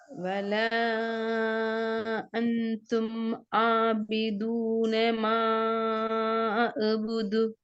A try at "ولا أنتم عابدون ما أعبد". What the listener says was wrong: அந்த என்றது தொண்டையிட முன்பகுதியா கொஞ்சம் பின்பகுதியா சொல்லுங்க பாப்போம். நீங்க எந்த இடத்துல வர சொல்லுங்க. தொண்டையிட முன்னுக்கா பின்னுக்கா? நீ உச்சரிச்சதை வச்சு முன்னுக்கு அண்ணன். ஓகே, அத பின்னுக்கு மாத்திரதான் இப்ப உங்களுக்கு இருக்கிற பெரிய ஒரு வேலை. அதை எப்படி கொண்டு போறேன்னு சொல்றது என்னடா, கொண்டு போறதுக்கு முதலாவது ஃபர்ஸ்ட் ஸ்டெப் என்னடா, கட்டாயம் நீங்க நாக்குட பின் பகுதிய எங்களுக்கு இயல்பாகவே தூக்கி பண்பு ஒரு தன்மை எல்லாம் தான் தந்திக்கிறேன். அது நாக்குட பின்ன நாங்க தூக்கணும்.